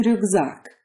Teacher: As in ryukzak, the k in the middle turns into a g. This is a rule that you get used to pretty quickly because it's so hard to say something like obloshka or ryukzak.